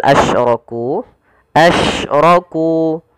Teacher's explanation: syin ya yang dia punya sifat namanya tafasyi apa itu tafasyi tafasyi adalah sifat huruf yang di mana menyebarnya suara syin di dalam mulut